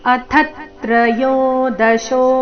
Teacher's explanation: ಥ ಮೇಲೆ ಆಘಾತ ಬರಬೇಕು